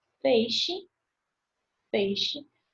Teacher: Decrescente, contrário, é formado por vogal, que é mais forte, e depois semivogal, também nessa ordem.